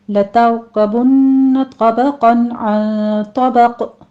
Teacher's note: لَتَرْكَبُنَّ طَبَقًا عَن طَبَقٍ، لتر را مفخم پڑھی جائے گی، اس کو سٹاپ کرنا ہے، اور آگے نون مشدد ہے، غنہ واجبہ کر لیں گے۔ طا پر پڑھا جائے گا، دونوں جگہوں پہ قاف بھی پر پڑھا جائے گا۔ طبقاً میں نون تنوین کا قاعدہ ہے ہمارے پاس، اظہار حلقی کریں گے۔